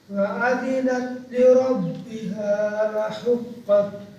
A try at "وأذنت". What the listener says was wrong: जी सिर्फ हम्स छोड़ी जा रहे हो भाई वअज़िनत जी